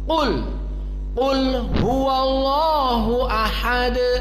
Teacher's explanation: lama taqra qul lazim tarfa lisanak ila al-a'la, hadal murad bi al-mufakhamah. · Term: qaf mufakhamah